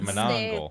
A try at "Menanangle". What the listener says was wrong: It's not the Monongle. It's got another syllable to it. Menanangle.